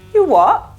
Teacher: in the uk they also drop the final t